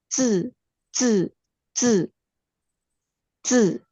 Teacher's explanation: kalau bunyi Z itu seperti ada T di depannya. Jadi perbedaannya huruf Z itu sebenarnya bunyinya adalah TC. · T dulu kemudian dia terpleset ke huruf Z.